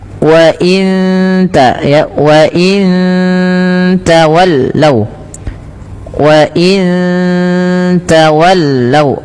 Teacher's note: Sama ketika nun mati bertemu tak lagi, ada bacaan ikhfa hakiki, samarkan nunnya ke tak.